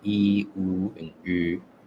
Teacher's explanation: So to make this sound, the U, all you have to do is say E, but round your lips as if you were saying oo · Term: close front rounded vowel